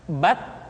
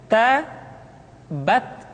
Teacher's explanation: huruf t ketika diucapkan terdengar ada nafas yang mengalir